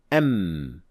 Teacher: When we say M with sukun on the mim, the two lips produce the sound when they collide or touch one another